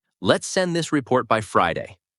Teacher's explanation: Right, it sounds like a question. Now say, let's send this report by Friday, with your voice going down. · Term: falling tone